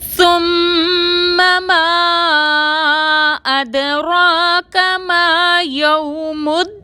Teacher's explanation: سا کو بغیر سیٹی کے ادا کریں گے · میم مشدد پر غنہ کریں گے